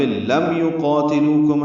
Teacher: لو واو مدہ ہے، کم میں کاف باریک میم ساکن پہ اظہار شفوی